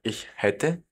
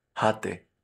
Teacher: Muy importante que esa A, como tiene umlaut, sea pronunciada como una E y no como una A, para no confundirla con el pretérito de haben, o sea, hatte, yo tuve, yo tenía.